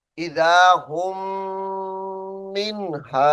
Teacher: ये हुम मीम साकिन को छोड़ेंगे और हा को मीम मुशद्दद से मिलाएंगे और गुन्ना करेंगे।